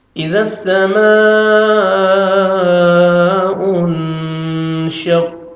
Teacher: قاف کو موٹا کر کے پڑھیں گے اور تا کو باریک پڑھیں گے · نون ساکن کے بعد حروف اخفا جو 15 لیٹرز ہیں ان میں سے شین آ رہے تو نوز میں ساؤنڈ لے کے جائیں گے